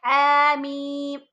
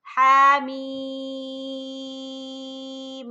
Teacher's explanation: اچھا یہاں میم پر غنہ نہیں کرنا آپ نے، یہ میم ہم نے یہاں غنہ کیا تھا میم مشدد کی وجہ سے، کیونکہ تشدید تھی اس پر۔ یہ میم بالکل سادہ ہے، یہاں غنہ نہیں کرنا، اس میم پر بھی ہم نے غنہ نہیں کرنا